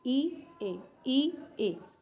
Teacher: ई और ए इन दोनों को आप बोल के देख लीजिए बिल्कुल ये जीभ के आगे से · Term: अग्र भाग